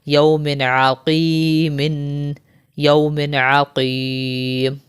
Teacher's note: دو زیر کے بعد حرف حلقی میں سے عین آ رہا ہے تو یہاں پر بھی ہم غنہ نہیں کریں گے